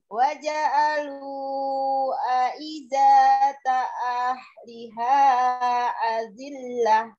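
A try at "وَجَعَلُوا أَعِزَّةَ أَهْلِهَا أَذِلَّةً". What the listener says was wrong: Tadi ketinggalan Umi Zainya. Aidata ah.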